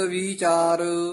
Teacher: ਗੁਰ ਸਬਦ ਵੀਚਾਰ ਜਿਹੜਾ ਵੀਚਾਰ ਪਦ ਹੈ ਨਾ ਕਿਤੇ ਵੀ ਆਵੇ ਵੀਚਾਰ ਲਮਕਾ ਕੇ ਨਹੀਂ ਬੋਲਣਾ ਛੇਤੀ ਬੋਲਣਾ ਹੈ ਇਕੱਠਾ ਹੀ ਬੋਲਣਾ ਹੈ